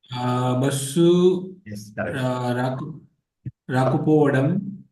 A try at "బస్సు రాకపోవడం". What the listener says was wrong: Perfect. రాకపోవడం. బస్సు రాకపోవడం. Yes, perfect.